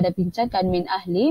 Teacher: nun mati berjumpa dengan hamzah maka dibaca secara jelas dan hukumnya adalah izhar halqi